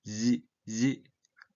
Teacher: 이거는 뭐 시옷 시 그때보다 윗뒤에 아래니 더 밀착이 시키면 밀착이 되니까 공기가 바깥으로 더 약하게 나오면서 성대를 울리게 되는 거죠. 그래서 지 그래서 울림소리 Z 발음이 되는 겁니다. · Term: 반치음